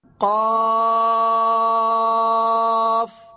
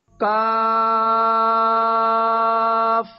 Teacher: پہلا ہے قاف، یہ تھوڑا موٹا کر کے پڑھیں گے، اور دوسرا ہے کاف، یہ تھوڑا نرم باریک کر کے پڑھیں گے